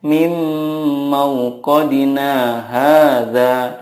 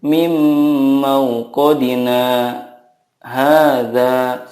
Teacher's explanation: Nah, dari kata mauqadina ke hadza harus ada saktanya. Tidak boleh langsung dibaca seperti ini.